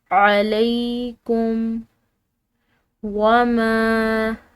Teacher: میم اس کے اوپر چھوٹی مد ہے، اس کو ہم نے لمبا ادا کرنا ہے